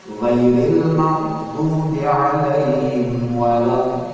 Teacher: dallin itu namanya mad lazim mustaqbal kali. Panjangnya 6 harokat.